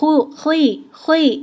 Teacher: زیر کی حالت میں بھی خو کو پر اور موٹا پڑھیں گے، خوی، خوی، اس میں ہونٹ نہیں گول ہوں گے لیکن موٹا کرنے کی کوشش کیجیے گا اس کو، خلالہ۔